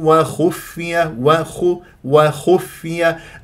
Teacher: الخاء مفخمه مرتبه ثالثه لا تفخم للواو و وخفي لمجاورتها للخا الخاء من حروف الاستعلام مفخمه مرتبه ثالث مضمومه لا تسحب ضمه الخاء الى الفاء تقول وخف شوف نطقت الفاء